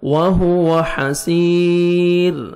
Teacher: سین یا مد ہے، 1 سیکنڈ آپ نے سین کو کھینچنا ہے اور را کو باریک پڑھیں گے. جب سٹاپ کریں گے را وقف کریں گے.